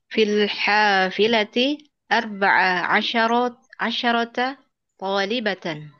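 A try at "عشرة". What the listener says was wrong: shinnya mati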